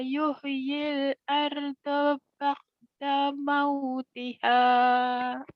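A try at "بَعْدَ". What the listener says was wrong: Iya pintar, tapi orang Jawa tuh ain matinya jadi bakda ya. Jangan bakda, barda ya. Barda. Jangan bakda, jangan keka. Itu bukan ka mati tapi ain mati. Ngadan sedikit barda.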